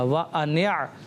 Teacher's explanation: عین جو ہے یہ حلق کے درمیان والے حصے سے ادا ہوتا ہے۔